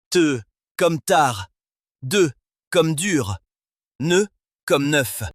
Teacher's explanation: Si la pointe de la langue vient toucher les dents du haut, on obtiendra un te pour la version non voisée, un de pour la version voisée ou un nœ pour la version nasale.